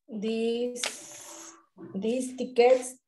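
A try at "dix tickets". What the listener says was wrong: Di, la X no suena hacia adelante de una consonante. Di ticket.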